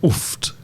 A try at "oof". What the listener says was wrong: I don't say T at the end. No, just oof.